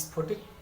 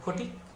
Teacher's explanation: প্রথম শব্দটা আমরা সবাই জানি, কিন্তু অনেককে বলতে শুনবে প্রথম, কারণ নাম স্ফটিক, অনেকে বলে ফটিক, এই যে স্ফটিক থেকে ফটিক বা প্রথম থেকে প্রথম বা স্থান থেকে থান, প্রত্যেকটার ক্ষেত্রে দেখো শব্দের একেবারে প্রথম থেকে একটা ব্যঞ্জন ধ্বনি লোপ পাচ্ছে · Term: আদি ব্যঞ্জন লোপ